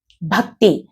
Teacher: త్ అంటే పుల్లు, త్ అనే ఆ పుల్లు కూడా పూర్తిగా వినిపించాలి. కాబట్టి ముందున్న అక్షరంతో కలుపుకుంటూ చదువుతామన్నమాట.